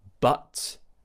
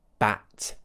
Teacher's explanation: many of my students pronounce words like but a bit like bat where they push the tongue down too much and open the mouth too much